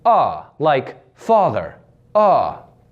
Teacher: the AH is pushed forward due to the tension in the front of the lips